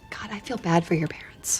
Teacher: The D in bad, since it's followed by another consonant, basically it's unreleased. The tongue does not release from its position or contact with the palate until the F in 4 begins.